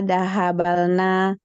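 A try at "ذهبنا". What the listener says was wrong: Baknya disukun, baknya disukun ya. Dahabna, dahabta, gitu kan, baknya disukun.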